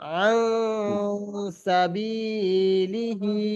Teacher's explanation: নাকের ভিতরে আওয়াজটা এক আলি পরিমাণ গুণনা করে পড়তে হবে।